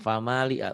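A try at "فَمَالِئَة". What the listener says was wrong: Ya-nya jangan dibaca, tapi hamzahnya ya.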